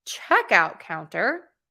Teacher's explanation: So we're going to stress check because that's the first word. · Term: compound noun